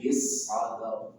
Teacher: Ra-nya ditebalkan karena dia di akhir.